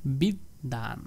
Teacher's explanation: বফালাটা যুক্ত হয়েছে দ এর সাথে এজন্য ওই দ টাকে দুইবার উচ্চারণ করব